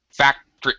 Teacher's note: I reduce pronunciation to such a degree that it sounds like two syllables.